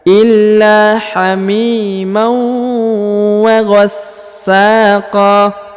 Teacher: tanwin ya, bertemu dengan waw tasdid, maka ditahan, ditekan 2 harokat dan didengungkan